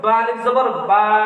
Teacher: আলিফের উচ্চারণ মুখের ভিতর শূন্যময় স্থান হইতে, হ্যাঁ, মধ্যের হরফ হইলে উচ্চারিত হয়।